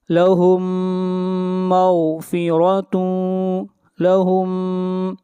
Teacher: میم ساکن کے بعد میم ہے، یہاں پر ادغام ہوگا